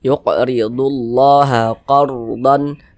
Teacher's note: lafaz Allah harus tetap dibaca panjang